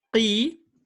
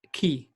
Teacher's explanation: So when we say qi, we do make this letter thick. We don't say ki.